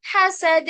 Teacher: हा भी बारीक है, सीन भी बारीक है, दाल पे कलकला